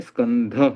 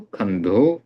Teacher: यहाँ पर जो दंत्य स और हलंत क साथ में है उनकी जगह पर हलंत ख आ गया